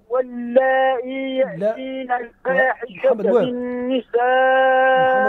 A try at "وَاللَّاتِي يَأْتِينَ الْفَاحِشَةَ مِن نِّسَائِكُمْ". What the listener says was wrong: بالتاء بالتاء. واللاتي يأتين الفاحشة. تقرأوا برواية ورش. اقرأ بالإبدال.